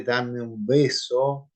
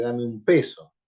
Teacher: Que se ha emitido una bilabial sonora, B, y no una bilabial sorda, P.